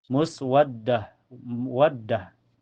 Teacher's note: Mempunyai sifat sofir, suara yang berdesis dan hamas keluar napas.